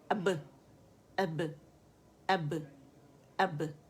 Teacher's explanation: ساکن ہوگا تو اس میں شدہ ہے, تو اب آواز بند ہو جائے گی سختی سے, ٹھیک ہے. اب اسے میں نے کلیئر کرنا ہے تو اس پہ قلقلہ ہوگا, اب, اب, اب, اب, ٹھیک ہے.